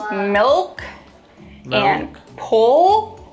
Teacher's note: In contrast to the light L, when you produce the dark L, the back of your tongue bunches.